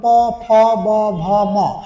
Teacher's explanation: প থেকে ম পর্যন্ত এই পাঁচটি বর্ণ উচ্চারণ করতে গেলে দুই ঠোটের সংস্পর্শ ছাড়া উচ্চারণ করা সম্ভব না। ঠোটের অপরণ হচ্ছে অষঠ বা অধর বলি। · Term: অষ্টবর্ণ, ওষ্ঠবর্ণ